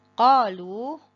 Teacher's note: Qalu, ko-nya 2 harokat, lu-nya 4 sampai 5 harokat.